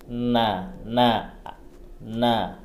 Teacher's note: huruf na itu ujung lidahnya ada di langit-langit atas bagian depan